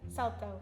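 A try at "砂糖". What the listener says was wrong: You're saying salt. No, sato. You're just saying salto.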